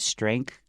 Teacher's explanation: 那 个 e 是 at 的 这 个 发 音， 然 后 加 上 后 面 的 那 个 鼻 音， 还 有 你 的 th 位 在 尾 巴， 所 以 要 记 得 舌 尖 要 稍 微 伸 出 来